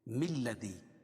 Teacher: اور اگر العظیم کو الذی کے ساتھ ملا کے پڑھیں گے، العظیم کو الذی کے ساتھ ملا کے پڑھیں گے تو یہ حمزۃ الوصل ہے، یعنی ملانے کی صورت میں یہ حمزہ جو ہے یہ گر جائے گی. تو ہم اس کو پڑھیں گے ملذی.